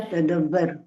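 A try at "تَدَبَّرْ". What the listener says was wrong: तदब्बर, रू नहीं है सिस्टर, साकिन हो गया ये, ठीक है, तदब्बर।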